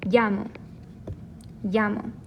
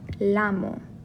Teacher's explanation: This does not make a la sound like a singular L would, but this makes a traditional Y sound.